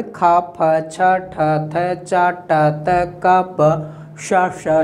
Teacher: खर प्रत्याहार में आने वाला वर्ण ख, फ, छ, ठ, थ, च, ट, त, क, प, श, श, श, जिसे हम विबार श्वास अघोष कहते हैं।